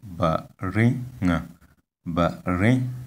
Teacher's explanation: Here we have the word baringa, baringa. You can see that the tone is on the second syllable or the second vowel